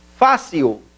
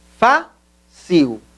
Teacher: é parossítona, porque a maior inflexão da voz acontece na penúltima sílaba